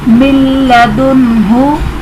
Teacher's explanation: اس میں نون ساکن کے بعد حروف یرملون میں سے لام آ رہا ہے تو یہاں پر بھی ادغام بلا غنہ ہوگا، یعنی غنہ نہیں کریں گے